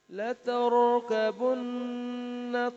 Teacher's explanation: لترکبن میں را کو موٹی حالت میں پڑھنا ہے کیونکہ را ساکن ہے، اور اس سے پہلے جو ہے وہ زبر ہے. اگر را کے اوپر زبر اور پیش ہو را موٹا پڑا جاتا ہے، زیر ہو تو باریک پڑا جاتا ہے.